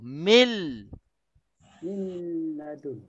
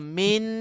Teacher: Tapi bila nun ini bertemu dengan lam, hukumnya idgham bila gunnah, nun ini akan tersembunyi dan akan dimasukkan sepenuhnya ke dalam lam